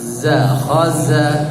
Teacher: za tidak boleh khosa sifatnya jahar khaza bukan khosa.